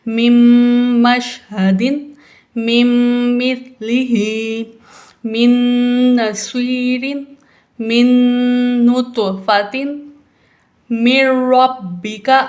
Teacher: نون ساکن کے بعد میم آ گیا، حروف یرملون میں شامل ہے، تو یہاں پہ ہم غنہ کریں گے